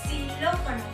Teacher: Para pronunciar esta X, únicamente tenemos que elevar la punta de la lengua y colocarla muy cerca de los dientes. Pero podemos y debemos cuidar que no haga contacto con nuestro paladar para así permitir la salida del aire. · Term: suena como S